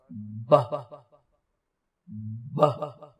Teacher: بہ، اب 2 چیزیں تو سیم ہیں، بائی لیبیل ہے یہ بھی، اور دوسرا یہ کہ یہ بھی سٹاپ ہے، ہونٹوں کو سٹاپ کرتا ہے۔ لیکن جو تیسری چیز ہے وہ یہ ہے کہ یہ وائسڈ ہے، یعنی کہ اس کی آواز آتی ہے، یہ وائس لیس نہیں ہے۔